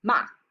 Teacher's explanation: The fourth tone starts high before a sharp and sudden drop. This tone is held for less time than any of the others.